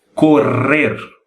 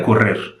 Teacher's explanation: tem que sentir a língua batendo algumas vezes no céu da boca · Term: duas r